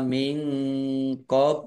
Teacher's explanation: nun sukun bertemu dengan huruf qof bacaan Ikhfa dibaca samar-samar